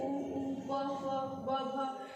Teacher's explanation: ओष्ठ यानी कि होंठ के सहयोग से जिनका उच्चारण होता है वो ओष्ठ वर्ण कहलाते हैं